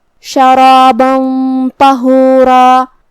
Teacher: ہمیں غنہ کو اور طا کو دونوں کو موٹی آواز میں ادا کرنا ہے